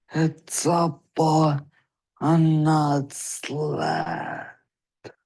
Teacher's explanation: he had a little bit of breathy vocal quality he had a little bit of strain and strangle